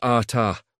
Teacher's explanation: Ata is ata with emphasis on the second syllable.